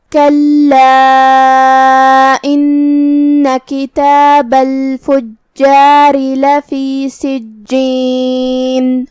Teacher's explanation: کلمت کلا میں یہاں لام پہ تشدید ہے. 2 حرف کے برابر ہمیں لام کو پڑھنا ہے کیونکہ تشدید کی اصلیت 2 حرف ہوتی ہے. جیسا کہ یہاں حرف اللام ہے تو یہ 2 لام ہے، لام ساکن اور لام متحرک زبر سے.